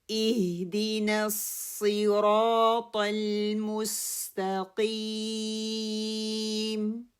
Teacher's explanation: اپنے ہا کے مخرج کو دیکھنا ہے، کسرہ کو مجہول نہیں پڑھنا، پھیلا کے نہیں پڑھنا